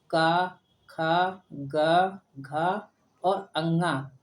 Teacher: का वर्ग की उत्पत्ति कंठ से होती है।